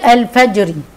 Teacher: هتاخد حكم الراء الساكنه اللي قبلها ساكن قبله مفتوح فهتكون الراء هنا مفخمه